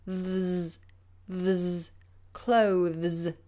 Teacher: It's tough because you have that movement of the tongue from the TH to the S or Z sound.